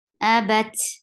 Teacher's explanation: So whenever ta will get sukoon, we will get sifa of hums, and hums is a flow of breath. So there should be a flow of breath on ta